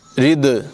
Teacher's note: दाल जो है ये हुरूफ़ क़लक़ला में से है, इसकी आवाज़ को भी खूब ज़ाहिर करेंगे